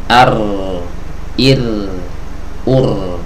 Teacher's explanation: agar suara huruf ra itu bisa keluar Ar Ir ur ya jadi dia bergetar tapi tanpa melepaskan ee bagian ee ujung lidah dari gusi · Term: huruf ro